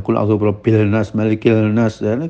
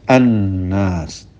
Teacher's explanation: ada lam sakinah yang diidghamkan ke dalam nun, seperti al-nas menjadi an-nas.